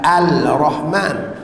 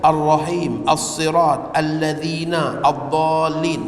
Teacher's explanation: semua lamnya seolah-olah tidak wujud lagi dalam sebutan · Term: hukum idgham